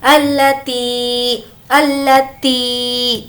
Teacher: تی کو کھینچیں گے کیونکہ یہاں پر یا مدہ کا قاعدہ ہے